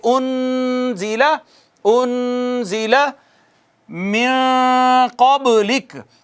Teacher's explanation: یہاں بھی غور کیجیے آپ، نون ساکن آ گیا، نون ساکن کے بعد حروف اظہار نہیں ہے لہٰذا یہاں اظہار نہیں ہونا، حروف اخفا میں سے ہے نا قاف، فا قاف کاف آخر پہ، لہٰذا نون ساکن پہ اخفا ہوگا، ایک الف کے برابر آواز چھپائیں